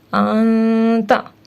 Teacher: نون کے بعد تا ہے جو کہ حروف حلقی میں سے نہیں ہے، اس کو ہم ظاہر کر کے نہیں بلکہ اخفا کر کے پڑھیں گے